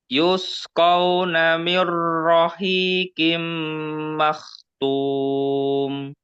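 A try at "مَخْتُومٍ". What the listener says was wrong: Taknya tipis. Maktum, tum.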